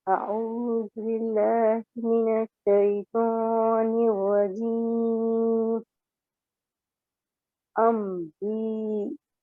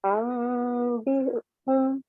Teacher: چونکہ حمزہ ساکن ہے تو ہلکا سا جھٹک دیں گے، ہلکا سا جھٹکا ہوگا